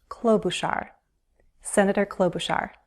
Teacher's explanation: I have heard people use the CH, ch, but when I hear Senator Klobuchar introduce herself, I hear an SH sound